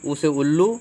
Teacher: ऊ जो है ऊ से आप पकड़ने के लिए ऊ से उल्लू, ओ से ओष्ठ, मतलब जब उल्लू आप बोलेंगे तो आपका जो ओष्ठ है वो बाहर निकलता है। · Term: ओष्ठ ध्वनियाँ